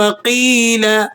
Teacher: یا ساکنہ ما قبل مکسور، یا مدہ ہے، 1-2 سیکنڈ آپ اسے کھینچ کر پڑھیں گے